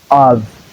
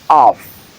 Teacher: in the first word we have the vv sound at the end whereas in the second one we have the f sound at the end